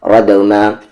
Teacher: را کو دا میں رد، میم کے ساتھ الف ما، ردما، را ہیوی اور دال پر قلقلہ.